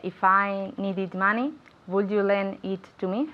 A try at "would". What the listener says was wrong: Okay, now be careful, very good, but be careful with the pronunciation of would, okay? We need to say that w sound, okay?